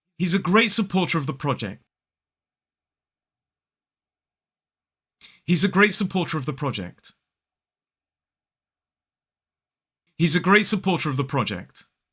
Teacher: There are actually 5 schwas in this sentence.